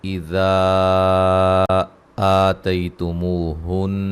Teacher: ذال پہ مد جائز ہے، آ مد اصلی ہے ، تی لین ہے، مو و مدہ ہے، نون مشدد پہ